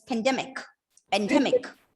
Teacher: the first syllable is not reduced to schwa